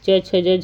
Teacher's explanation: छ ध्वनि का उच्चारण स्थान तालव्य होगा